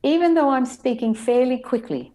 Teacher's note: even the e was lengthened slightly, fairly the air was lengthened and the i in quickly I lengthened slightly